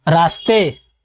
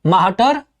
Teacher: भोजपुरी में छोटा स और बड़ा स के स्थान पर ह का प्रयोग होता है।